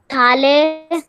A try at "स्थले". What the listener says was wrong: स्थाले नहीं, स्थले, स्थाले नहीं, स्थले। एक मिनट आप गलत उच्चारण कर रहे हैं। स्थाल नहीं, स्थले, स्थले, स्थलयो,